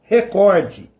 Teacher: E a palavra recorde não tem um acento no primeiro E, então não é recorde, é recorde. A sílaba tônica está no cor, recorde.